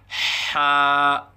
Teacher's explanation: مخرج حا وسط حلق سے ادا ہوتا ہے، یعنی حلق کے درمیان سے حا ادا ہوتا ہے